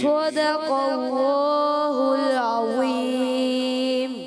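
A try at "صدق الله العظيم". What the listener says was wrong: اچھا آپ نے کیا صدق اللہ لام کو ہلا دیا. لام کو ہلانا نہیں. صدق اللہ العظیم.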